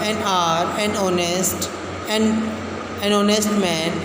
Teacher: begin with a vowel sound as the initial consonant H is not pronounced